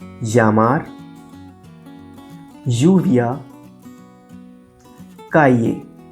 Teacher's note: Whenever there is a double L in a Spanish word, it sounds just like Y.